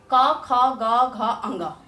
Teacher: ये क ख ग घ अंग का उच्चारण स्थान कंठ है